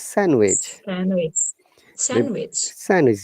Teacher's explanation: no d sound in sandwich